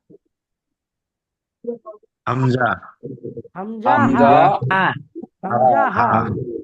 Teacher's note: কন্ঠনালী অর্থাৎ গলার একদম নিচে থেকে উচ্চারিত হয় হামজা হা